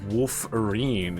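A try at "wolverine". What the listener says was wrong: wolf. There's WLV. There's no F. And wolf is more like a badger than.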